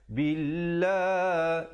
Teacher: lafzul jalalah dibacakan dengan nipis 2 harakat